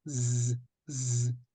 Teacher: en fait on vient presque siffler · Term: le Z